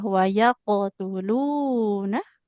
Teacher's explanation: Huruf qalqalah qafnya pastikan dia tebal ya.